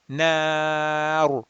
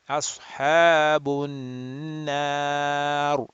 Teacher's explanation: And if there's a ra which is sakin, you look at the letter before, which is significant, which is known with a fatha, na, and this fatha is going to go and make this ra sakin, mufakham, rounded, heavy.